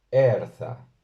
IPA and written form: 'ɛr.θa (AÍRÞA)